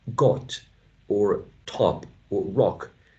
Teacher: So the tongue, when you say got or top or rock, should be lower back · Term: low back vowel sound